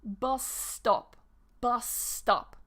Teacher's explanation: So it just becomes one long S